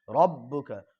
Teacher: ربک کے را کے کو پر پڑھیں گے اس لیے کہ را پر زبر یا پیش ہے تو را پر ہوگی۔ ربک، با کے اوپر قلقلہ بھی ہوگا اس لیے کہ با حروف قلقلہ میں سے ہے اور اس کو 2 مرتبہ پڑھیں گے تشدید ہونے کی وجہ سے، اور آواز میں سختی بھی ہونی چاہیے۔